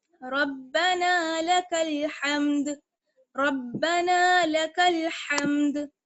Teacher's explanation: اور اگر آگے آیت ہم ٹھہرنا چاہتے ہیں تو ہم دال کو ساکن کر دیں گے اور حمد. حمد جب کہیں گے تو پھر دال ساکن ہوگی تو یہاں پر قلقلہ ہوگا